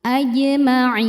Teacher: Mad thobiinya ya sukun didahului kasrah huruf [mendengus] yang disukunkannya nun. Maka ainnya panjang boleh dua boleh empat atau enam harakat asal konsisten dalam sekali duduk. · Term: mad arid lukun